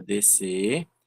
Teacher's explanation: porque o S e o C se juntam num só som, e aí nós temos, ao invés de 6 fonemas e 6 letras, a gente tem 6 letras e 5 fonemas.